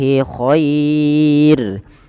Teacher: ro-nya ini tidak boleh ditebalkan tapi dibaca dengan tipis dan kita namakan dengan ro tarqiq. Khair bukan khairu, enggak, tapi dia tipis.